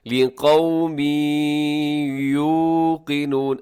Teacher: تنوین ہے، لقومن کے آخر میں تنوین آپ کو نظر آ رہی ہے، دو زیر کی تنوین ہے، اور آگے یا آ رہا ہے حروف یرملون میں سے، یہاں ادغام کیجیے گا